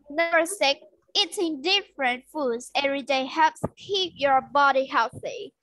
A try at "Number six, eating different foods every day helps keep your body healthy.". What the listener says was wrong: Good. Okay, nice.